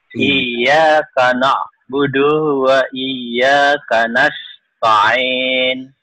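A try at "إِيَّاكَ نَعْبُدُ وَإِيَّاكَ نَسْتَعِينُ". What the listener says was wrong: Kenapa dunya panjang? Emang ada yang manjangin? Ada yang manjangin nggak dunya?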